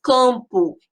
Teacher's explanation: esse ó tem som de u